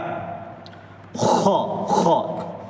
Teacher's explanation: یہ حلق کے شروع والے حصے سے نکلتا ہے، اپنا جو تھروٹ ہے گلا، اس کے شروع والے حصے میں بالکل بالکل آگے والا حصہ، خ خ۔